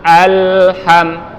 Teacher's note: Nah, huruf lam ini makhrajnya atau tempat keluarnya adalah ujung lidah kita diangkat ke pangkal gigi atas atau ke gusi depan bagian atas. Jadi ketika dia sukun, tempelkan al.